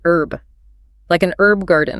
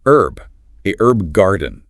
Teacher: So silent H in AME, pronounced H in BRE for that specific word.